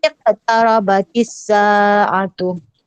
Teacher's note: Sa yang panjang, bukan A yang panjang.